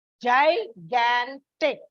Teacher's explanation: When you pronounce it, there is a slight stress on the second syllable.